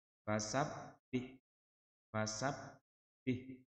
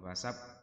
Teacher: ada huruf tasydid, dibaca rangkap atau bacanya dengan cara ditekan. Ditekan bukan ditahan, bukan berdengung, tidak. Fasabbih, fasabbih, bukan fasab, bukan begitu.